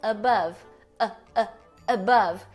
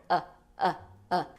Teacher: ela é chamada de vogal neutra porque ela é Central A língua não tá nem para cima nem para baixo ela tá parada aqui no meio